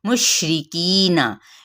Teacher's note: मुशरिकीना, की पे मद्देसरी बिल या का कायदा, नून की हरकत को लंबा नहीं करेंगे